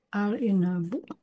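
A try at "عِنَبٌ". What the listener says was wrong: Inabu aja nggak usah pakai al. Inabu kan bukan inabu. Inabu. Inabun. Inabun ya. Enggak, enggak. Inabun.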